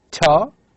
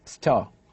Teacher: either with a strong puff, with a strong aspiration, as for example in word ta, okay, or might be pronounced in a different way with less puffing, as in the word star